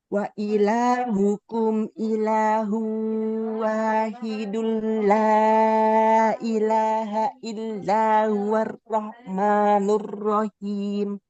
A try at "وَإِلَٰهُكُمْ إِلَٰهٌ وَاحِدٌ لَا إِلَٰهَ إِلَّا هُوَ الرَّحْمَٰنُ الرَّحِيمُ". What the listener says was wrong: Oke, huruf ro-nya kurang tebal ya. Kemudian jangan terlalu banyak getarnya.